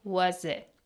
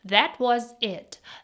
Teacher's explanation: Was it sounds like was it. Again the t at the end is replaced with a glottal stop. That was it.